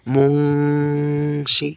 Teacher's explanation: ইকফার হরফ কয়টি এবং কি কি, এই যে দেখেন এখানে আছে মিম নুন পেশ মুন, দেখেছেন এখানে কি আছে, মিম নুন পেশ মুন, শিন জের শি, তারপরে কি বলতেছি আমরা, তিনটা হরফ একসাথে উচ্চারণ করলে মুংশি, ঠিক আছে। এই যে দেখেন মুং নাকের ভিতরে চলে যাচ্ছে